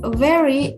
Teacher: there is no difference between these two of v and f both letters sound almost exactly the same because there is no vibration in the vocal cord